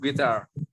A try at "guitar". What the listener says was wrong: Electric guitar. Guitar, U-nya jangan dibaca. Guitar. Jadi dalam bahasa Inggris itu ada huruf-huruf yang tidak dibaca. Namanya silent letters ya. Kadang-kadang huruf B nggak dibaca, kadang-kadang huruf L nggak dibaca, kadang-kadang huruf G nggak dibaca, kadang huruf U nggak dibaca.